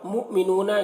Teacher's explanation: مؤمنون یہاں پر حمزہ ساکنہ ہے, جھٹکا لگے گا